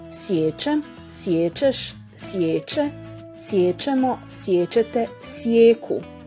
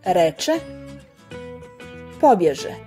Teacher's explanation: Zadnjonepčani suglasnici k, g, h ispred samoglasnika e prelaze u prednjonepčani suglasnike č, ž, š. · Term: prva palatalizacija